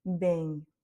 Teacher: on est sur un eng, comme s'il y avait un G à la fin finalement, mais qu'on ne prononce quand même pas trop fort.